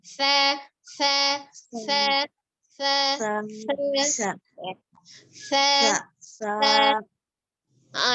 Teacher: huruf sa makhrajnya, cara pengucapannya ujung lidahnya ada di ujung gigi seri atas. Sa, sa, sa, sa, sa.